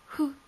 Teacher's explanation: 口を細めてフと空気を漏らしてウという音につなげるとフが出来上がる